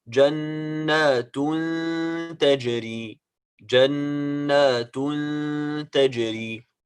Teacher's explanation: لن, you see, لن, the sound is coming, part of the sound is coming from the nose, and the other part is coming out from the mouth. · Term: غنة